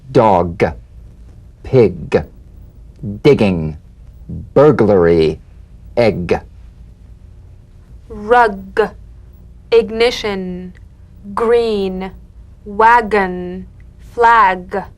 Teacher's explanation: of the back of the mouth without tightening pressing or pushing you'll feel a crisp tap and a voiced pulsation of the back of the tongue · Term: drum beat g